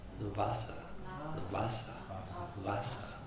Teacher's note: the V is softer than the English and closer to a W sound